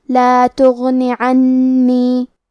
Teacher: بضر لا تغنی، کلمت تغنی میں غین کی ادائیگی حلق کے اوپر والے حصے سے ہے۔ غین حروف التفخیم میں سے ہے تو ہم یہ حرف کو موٹی آواز میں پڑھیں گے۔ آخری میں نون کے نیچے زیر ہے تو ہمیں نون کو صرف زیر سے پڑھنا ہے۔ · کلمت عنی میں حرف نون پہ تشدید ہے تو ہم 2 حرف کے برابر نون کو پڑھیں گے۔